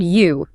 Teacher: the letter U makes an oo sound. But in English, it has that hidden Y sound at the start.